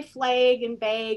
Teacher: my Minnesota dialect moves that A sound to that long A sound. And it's also because of the distortion next to the N and the R.